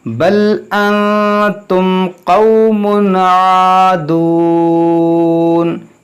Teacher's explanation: میم ساکن کے بعد قاف ہے تو یہاں پر بھی اظہار شفوی ہوگا